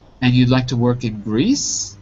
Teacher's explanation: yes-no questions get a rising tone, basically.